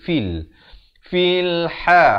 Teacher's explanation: Jangan baca fil tapi fil. Fa pada kasrah bunyi fi. Bukan fe. Bertemu lam jadi fil.